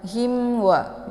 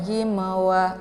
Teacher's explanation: Ini dibaca jelas mimnya ya karena ini merupakan Idhar syafawi